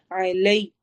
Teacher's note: عین حروف حلقی میں سے، حلق کے درمیان سے ادا ہوتا ہے. علی، لئی پڑھنا ہے، علی ہلکا سا ڈھیلا سا اردو سٹائل میں نہیں ہونا چاہیے.